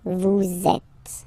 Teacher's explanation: vous is ending with S, and then you tend to make a little link between them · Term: liaison